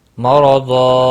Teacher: را زبر کی وجہ سے پر پڑھا جائے گا